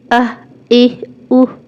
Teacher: اس میں نہ تو الف ملانا ہے، نہ ہی عین بنانا ہے، صرف سانس کا بریک، یعنی سانس کو توڑ کے طریقے سے آپ کا حمزہ ادا ہوگا۔